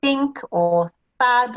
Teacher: we put our tongue, the tip of our tongue behind our teeth, or actually in between our teeth, and make a sound. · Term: th sound